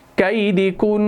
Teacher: ایک نون ساکن، ایک نون اپنا متحرک، دو نون کو ملا کر ایک نون شد کے ساتھ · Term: نون مشدد